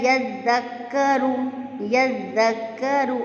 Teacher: دال کو ہم نرمی سے پڑھیں گے، یذکرو۔ اس میں سیٹی کی آواز نہیں آئے گی، اگر اس میں سیٹی کی آواز آئے گی تو دال زا میں چینج ہو جائے گا، اور الفاظ جب چینج ہو جاتے ہیں تو وہ پھر ترجمہ بھی چینج ہو جاتا ہے، جو کہ کبیرہ غلطی ہو جاتی ہے پھر، ٹھیک ہے؟